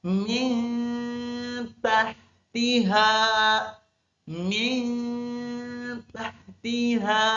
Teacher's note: kentara huruf min min tahtiha tetapi huruf minnya itu harus disamarkan huruf n-nya harus disamarkan menjadi n ng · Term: ikhfa hakiki